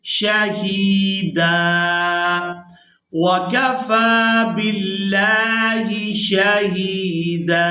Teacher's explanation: ہا کو یا مدہ کی وجہ سے، دال کو الف مدہ کی وجہ سے کھینچ کر ادا کریں گے۔